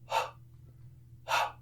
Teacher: So, if I say the word hot, the H is aspirated. Okay, so the only sound that you hear is the sound of the air moving. Hot, hot. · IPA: /h/